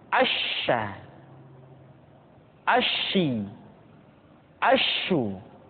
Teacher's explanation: oleh huruf Sya yang paling nampak adalah apa yang disebut dengan sifat atafasi yaitu menyebarnya angin di dalam mulut kita